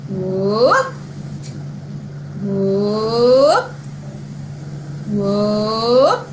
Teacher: so that pitch that goes up, it goes up